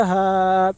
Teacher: ہا کے اوپر کھڑا زبر ہے، کھڑا زبر برابر ہوتا ہے الف مدہ کے، اس لیے کھڑا زبر کو ایک الف کے برابر کھینچ کر پڑھیں۔